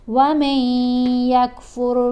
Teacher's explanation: اب یہاں پر نون خاموش ہے, میم کو ہم نے یا سے ملانا ہے غنہ کرتے ہوئے, یعنی ایک حرکت کے برابر ٹھہر کر پڑھا جائے گا